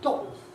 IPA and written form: ˡglɒʔo (glottal)